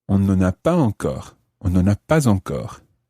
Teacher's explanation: It's in the negative, on n'en a pas encore. Equally, we could have said, on n'en a pas encore, using the liaison with the S.